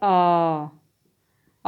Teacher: आ बोलने पर जिह्वा समान अवस्था में रहती है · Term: मध्य स्वर